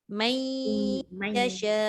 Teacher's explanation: Bunyi dengung saja tinggal. Nunnya dah tak ada dah kan. Masuk kepada ya.